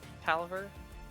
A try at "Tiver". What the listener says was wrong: Tiver. There's no L.